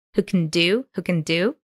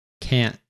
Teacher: and there is a broad a sound in the can't